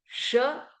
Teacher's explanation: श जब हम बोलेंगे तो जीभ तालुके लगेगी।